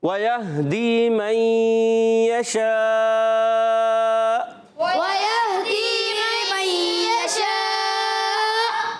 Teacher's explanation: حمزہ کو جھٹکا دے کے پڑھیں گے